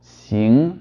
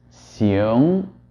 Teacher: So the first xing pronunciation that you're hearing is generated by retaining the sound in the front of the mouth as long as possible and only moving to the back at the ng part of the sound, while as the second xiong is allowing the sound to travel back into the mouth much earlier.